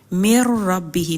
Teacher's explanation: اس میں دیکھیں نون کی آواز نہیں آ رہی ہے نا، ڈائریکٹ میم را سے ہی جڑ گیا ہے، تو یہ ادغام تام کہلاتا ہے۔